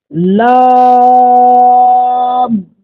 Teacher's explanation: جب زبان کے کنارے کو آپ ثناء علیہ کی جڑ پر رکھیں گے تب لام نکلے گا